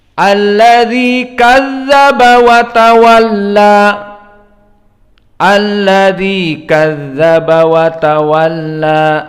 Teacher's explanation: Maka alladzi, hamzah, lam, dal dan ya kulluha muraqqaqah.